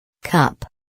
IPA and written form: kʌp (cup)